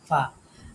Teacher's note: নিচের ঠোঁটের পেট আর উপরের দাঁতের আগা